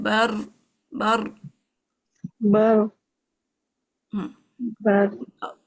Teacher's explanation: اور بر میں را پہ زبان اوپر ٹچ ہو جائے